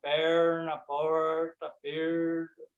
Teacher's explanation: Ele é aquele som retroflexo. Retroflexo quer dizer que a gente tem que enrolar a língua, apontar a língua para o céu da boca.